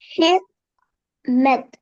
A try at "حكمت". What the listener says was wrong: ஹெக்மத் அல்ல, பெரிய காஃபா வந்து இது ஹெக்மத். ஆ, சின்ன காஃபை நார்மலா உச்சரிக்கணும், அவசரப்பட்டு பெரிய காஃபா போக கூட.